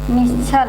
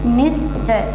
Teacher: दंती सा जुड़ता है तो वह किस सा में परिवर्तित हो जाता है, ताल वाले सा में परिवर्तित होता है